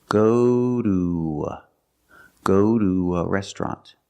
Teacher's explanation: So I cannot say go to a restaurant. We need to link these sounds, so we use the W, the w sound, to link the long oo